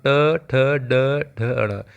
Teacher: इसमें हमारी जीभ थोड़ी सी तालू से आगे लग रही है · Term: मुर्धन्य, मूर्धा